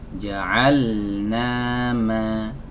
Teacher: Oke, kemudian masuk ke huruf mim. Huruf mim adalah huruf yang dikeluarkan dari dua bibir, ya, keluarkan dari dua bibir yang ditempelkan antara bibir atas dengan bibir bawah.